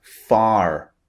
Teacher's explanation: far f a r is pronounced are far in British English in American English the r at the end of the word is pronounced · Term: American pronunciation